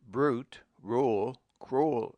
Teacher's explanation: When U comes after R, it has a sound of o u as in brute, rule, cruel